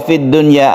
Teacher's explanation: alnya tidak dibaca, langsung ke tasydid dal.